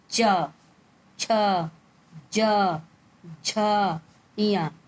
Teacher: तालब यानी ऊपर तालु से इन अक्षरों का स्पर्श हो रहा है, यानी ये छू रहा है। · च वर्ग को हम तालब यानी तालु, जो मुंह के अंदर तालु ऊपर का हिस्सा होता है, उससे उसको स्पर्श करके बोले। स्पर्श माने छू करके बोले।